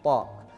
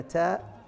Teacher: فمثلا التاء والطاء مخرجهما واحد، ولكن الصفات التي خلقها الله عز وجل في الحرف وجعلنا ننطقها بهذه الصفات تميز الطاء عن التاء. فالتفخيم في الطاء، القلقلة في الطاء تميزها عن التاء